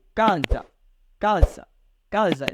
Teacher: Então, pronunciamos com mais intensidade ca. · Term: acento tônico